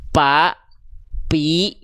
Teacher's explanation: Karena kalau huruf P yang nempel apa? Nih, kalau huruf P yang nempel adalah bibir atas dan bibir bawah. Sehingga kalau yang nempel bibir atas dan bibir bawah tidak akan keluar nafas.